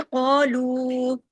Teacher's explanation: قاف کو ہیوی کیجیے، لو کو کھینچنا ہے